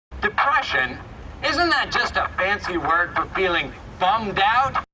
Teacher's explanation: you can hear the pitch range reset when we get to bummed-out which is the material in some closing quotes